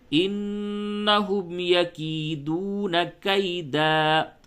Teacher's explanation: جب دو زبر پہ وقف کرتے ہیں تو الف زائدہ ہوتا ہے، اس کو پڑھتے ہیں، ساکن نہیں کرتے دال کو، بلکہ ایک الف زائد ہوتا ہے جو دو زبر کے بعد اکثر و بیشتر ہمیشہ لکھی ہوئی رہتی ہے، وہ الف، اس الف کو پڑھتے ہیں۔ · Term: حالت وقف